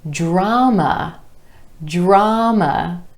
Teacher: Try this one, drama, drama. 2 syllables, emphasis on the ah sound in the first syllable